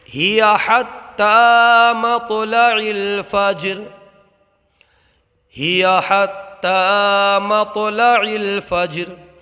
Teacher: ہیا کے اندر پہلے چھوٹا ہا ہے، اس کو جو اگلا کلمہ ہے اس میں شروع میں بڑا ہا ہے، تو دونوں کو برابر توجہ سے نکال کر کے پڑھیں گے